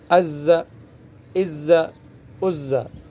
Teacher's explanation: مشدد کو سختی کے ساتھ پکڑنا ہے بس، قلقلہ نہیں ہے، اس لیے آواز کو روکنے کی کوشش کرنا ہے۔